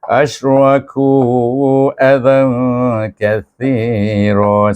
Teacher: suku kata pertama bunyinya ash, iaitu berhemburan, bertafasyik bunyinya dengan sifat tafasyik. Kemudian raku, ku dipanjangkan kerana dia bertemu dengan kalimah berikutnya bermula dengan hamzah azan.